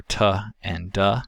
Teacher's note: there is a closure where the tongue tip makes a seal at the alveolar ridge